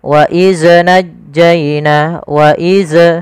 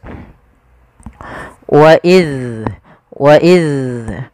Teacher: jangan sampai huruf zal ini terpantulkan. Kesalahan yang terjadi adalah memantulkan zal ketika dia berharokat sukun.